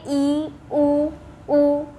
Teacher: इसमें जीभ को ऊपर लेकर जाते हैं, तालु के पास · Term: समृद्ध स्वर